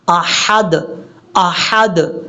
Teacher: حمزہ کے بعد جو ہا ہے یہ ہا بریک ہے